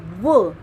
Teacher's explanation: दंतोष्ठ्य में वो आप खुद बोल के देखेंगे, द, दांत और होष्ट आपके दोनों मिलेंगे, वो, ठीक है। दांत जो है आपके वो ऊपर वाले दांत है वो नीचे वाले होठों पर लगेंगे, स्पर्श करेंगे, तो ये दंतोष्ठ्य होगा, ठीक है।